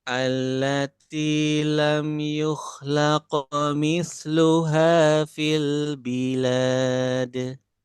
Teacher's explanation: Jangan sampai laqomi, jangan keseret sampai kayak ada fathahnya.